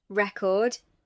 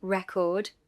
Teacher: The noun record has stress on the first syllable. The verb record has stress on the second.